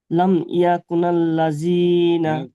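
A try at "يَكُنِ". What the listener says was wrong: কুনাল নয়, কুনিল, নুন লাম জের নীল।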